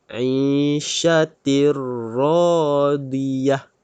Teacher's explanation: Kita kena masukkan bunyi tanwin ke dalam ra tanpa dengung. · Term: idgham bila gunnah